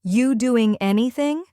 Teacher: Notice how are you becomes just you.